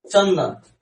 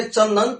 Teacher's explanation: तो अनुस्वार जो होता है वो नासिक से नाक से होगा।